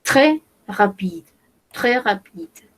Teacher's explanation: Acá no pronunciamos la S. Ahí. On ne prononce pas le S.